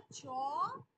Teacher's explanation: এমন কিছু বর্ণ আছে যেগুলো শুরুতে স্পর্শ বর্ণের মতো আর শেষে উষ্ম বর্ণের মতো উচ্চারিত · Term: ঘৃষ্ট বর্ণ